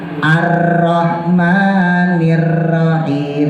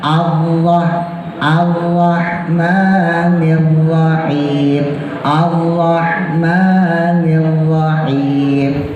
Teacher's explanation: Takrir itu bergetar 2 kali. Jadi getarannya cuma 2 maksimal.